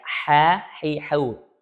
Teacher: H ini memiliki sifat hamas, yaitu aliran udara. Ya, ada aliran udara yang keluar ketika mengucapkan huruf H.